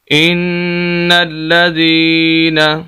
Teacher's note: هم شر البرية۔ نیکسٹ آیت نمبر 7 ہے، ان الذين، یہ نون مشدد غنہ ہوگا، اللام کے اوپر شد ہے، لام کو بھی سخت کریں گے